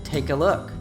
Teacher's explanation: the a reduces to a schwa sound, Then it hooks onto the previous word, take. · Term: connected speech